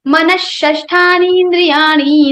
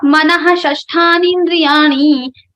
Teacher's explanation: Murdhanya Sha will come in the place of Visarga and Visarga sound will be removed. It will become Manashashthani indriyani instead of Manahashashthani indriyani.